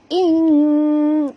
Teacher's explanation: In bukan baca in kun, bukan bunyi macam itu, tapi kita kena sorokkan separuh daripada bunyi nun ke dalam kaf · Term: ikhfa hakiki